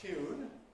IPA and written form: tj̊uːn (tune)